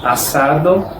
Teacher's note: Las dos S con sonido de una sola S del español